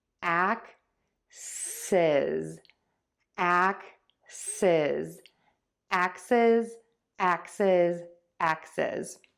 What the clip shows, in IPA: ˈæksɪz